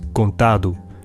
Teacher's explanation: the final T in contu becomes voiced D in Portuguese contu